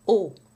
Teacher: And again the O is similar to a long O in English, but the English has the diphthong O, show, whereas in French there's no diphthong, it's just O, a lot of tension.